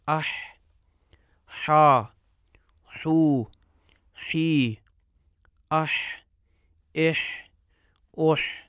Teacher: حرف حا میں زبان کا وہ انتہائی حصہ جو غذا کو سانس والی نالی میں جانے سے روکتا ہے تھوڑا سا پیچھے کو جاتا ہے۔ اس قدر پیچھے نہیں جاتا کہ جس مقدار میں عین کے لیے پیچھے جاتا ہے۔ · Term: حا کا مخرج